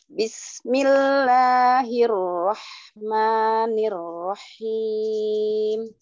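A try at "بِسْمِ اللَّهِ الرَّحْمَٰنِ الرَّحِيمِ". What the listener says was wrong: Masih ya, masih Nir-Rahim. Rahim, coba Rahim. Rahim. Jadi roh baru hi, bukan roh. Kalau roh berarti haknya tuh ada tasydid. Ini enggak ada. Rahim. Dipisah.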